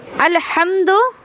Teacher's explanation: अल्हम्दु, अल में जो हमज़ा है शुरू का, ये हमज़ा है आपका हलक के नीचे वाले हिस्से से अदा होता है, ठीक है। लाम में तो कोई परेशानी नहीं है।